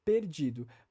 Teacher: Para mim, por exemplo, no meu sotaque, no sotaque de boa parte do português brasileiro, o som do E de perdido, que é antes da sílaba forte, que é di, né, perdido, é um som fechado